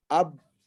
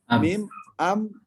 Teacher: Persis mirip banget huruf ba dan huruf mim tersebut. Ab tertutup, am juga tertutup.